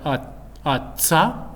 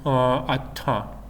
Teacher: when we have atza, the voice onset time will be longer than atta, or even with Russian style pronunciation atta, when without any aspiration, it will be much shorter.